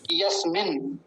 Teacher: यस्मिन दो नकार हैं, दोनों का हल्का हल्का सा उच्चारण आएगा।